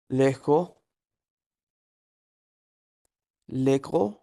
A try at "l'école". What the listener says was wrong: এলটা উচ্চারণ করেন, লাস্ট এটা তো ও, তাই না? ওটা স্পষ্ট করতে হবে, তাহলে লেকোল, হ্যাঁ, লেকোল,